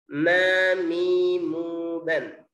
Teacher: Yang ketiga yaitu mim. Tertutup biasa disertai dengung.